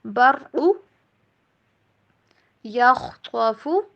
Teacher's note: خا اور طا دونوں کو موٹا کر کے پڑھیں گے۔